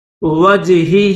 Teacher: اس ہا کو 3 الف کی مقدار میں کھینچیں گے۔